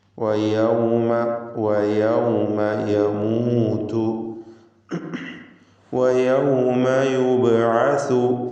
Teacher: പിന്നെ വാവ് പ്രത്യേകം സൂക്ഷിക്കണം. വാവ് 2 ചുണ്ടുകളിൽ നിന്ന് ഉച്ചരിക്കണം. വാവിൻ്റെ ഉച്ചാരണ സമയത്ത് ചുണ്ട് വൃത്താകൃതിയിലായിരിക്കും.